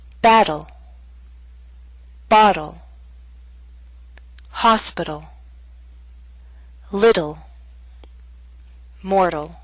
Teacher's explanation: we have the flap T followed by an unstressed L sound, ul.